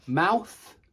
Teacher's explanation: we call the th sound at the end of the noun voiceless because there are no vocal chords vibrating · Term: th voiceless